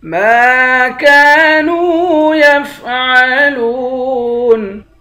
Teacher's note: میم کو بھی ایک الف کی مقدار کھینچیں گے، کاف کو بھی ایک الف کی مقدار کھینچیں گے، نون کو بھی ایک الف کی مقدار کھینچیں گے، تینوں کو ایک الف کی مقدار کھینچیں گے، تینوں حروف مدہ ہیں۔